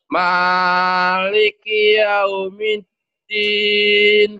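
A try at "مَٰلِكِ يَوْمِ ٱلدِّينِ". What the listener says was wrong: Jangan kepanjangan ma-nya, cuma satu alif. Maliki yaumiddin. Maliki yaumiddin.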